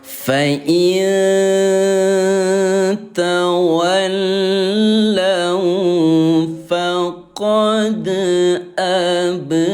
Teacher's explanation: Jadi qalqalah dibaca pantul gitu ya